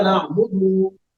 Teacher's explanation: दाल को लंबा नहीं करना था लेकिन आपने लंबा कर दिया